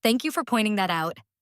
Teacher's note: Rising tone on thank you shows sincerity.